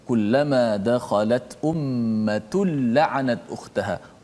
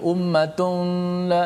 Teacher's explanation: Maka cara baca itu, tanwin tu dimasukkan dalam lam secara total. Maknanya tidak ada lagi tanwin nun tu. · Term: idgham bila gunnah